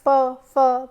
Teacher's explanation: Labiodental, as I mentioned, with the involvement of the lower lip and the upper teeth.